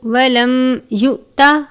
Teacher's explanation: میم ساکن کے بعد یا ہے، اظہار شفوی کا قاعدہ لگتا ہے، یعنی غنہ نہیں کرتے۔ حمزہ اور جزم ایک ساتھ ہو تو حمزہ ساکنہ ہوتا ہے، حمزہ ساکنہ ہو تو اس صورت میں حرف کو جھٹکا دے کر پڑھتے ہیں، تو ہم اس کو یؤتا اس طرح سے پڑھیں گے، یوتا نہیں پڑھنا بلکہ یؤتا پڑھیں گے۔